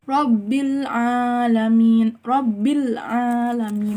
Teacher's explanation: Alif lam komariah yaitu lamnya dibaca dengan jelas.